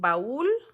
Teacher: Por ejemplo, en baúl, el acento recae sobre la U, entonces hay que separarlo de la A